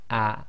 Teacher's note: the hamza acts as the gloal stop in Arabic and you should feel a slight blocking of the bottom of your throat.